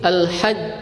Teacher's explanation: sifat syiddah ini menghalangi aliran suara pada huruf, sehingga apabila kita membunyikan kata al-hajju, maka pada kalimat tersebut kita tidak bisa mengalirkannya